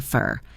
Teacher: The O in for is reduced to a schwa